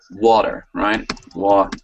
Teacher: they don't hit that T. They don't have time to give you the T in water.